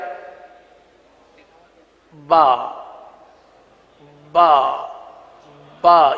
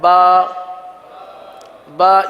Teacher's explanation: थोड़ा सा फर्क एक तर हिस्सा है एक खुश्क हिस्सा है अगर तर हिस्से से के बजाय खुश्क हिस्से से अदा करेंगे तो बा के बजाय पा बन जाएगा